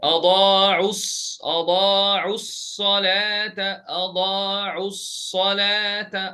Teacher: So I dropped the waw and the alif الصفر المستجيرة and the همزة الوصل ولام الساكنة الغير منطوقة, the lam that is not getting pronounced, and I'm jumping from there all the way. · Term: التقاء الساكنين